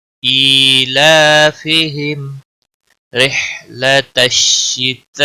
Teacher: میم ساکن کے بعد را آیا ہے، اس لیے یہاں پر اظہار شفوی ہوگا۔